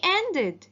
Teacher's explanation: The verb ended, the ed ending sounds like id because the verb end ends in d sound